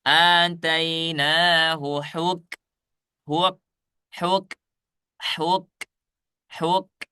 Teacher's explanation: Ini huruf kaf tidak mantul.